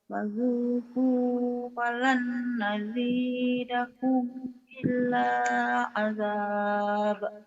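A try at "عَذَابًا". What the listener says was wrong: Dua patah dibaca satu. Adaba.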